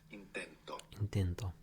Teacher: the accent in the present tense is going on the penultimate syllable the second last syllable